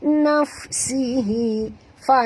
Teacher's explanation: bunyikan hamasnya, naf ya, keluarkan angin, ketap gigi atas ke bibir bawah